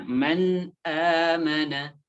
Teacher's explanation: Nun nya atau tanwinnya harus dibaca jelas tanpa ada dengung atau guna · Maka ketika ada nun sukun atau tanwin bertemu dengan salah satu huruf ini, maka nunnya atau tanwinnya harus dibaca jelas tanpa ada dengung atau gunnah. Seperti misalnya di sini contohnya man amana. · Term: izhar